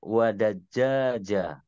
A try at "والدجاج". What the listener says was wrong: Nah, enggak pakai tasydid ya. Wadaja aja.